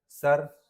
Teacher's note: स बोलते समय जीभ का अगला हिस्सा मुसड़ों को टच करता है और घर्षण पैदा होता है।